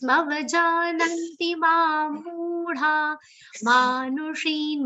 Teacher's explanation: Ma is a long sound. Nu is a short sound. She is a long sound. So alternately short and long sounds.